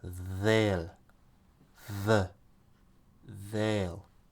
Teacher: The TH, it has a little bit of a Z sound.